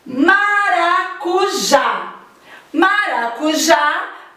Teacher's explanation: as palavras oxítonas tem a última sílaba da palavra como tónicas